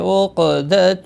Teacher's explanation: قاف ساکن پر قلقلہ ہوگا.